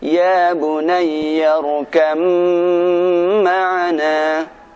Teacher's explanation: Berikutnya contoh pada huruf ba mati bertemu dengan mim. Maka ba-nya tidak dibaca, kita masuk ke huruf mim.